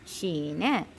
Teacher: നാക്കിന്റെ മധ്യവും നേരെ മേൽഭാഗവുമാണ് ഷീനിന്റെ മഹ്റജ്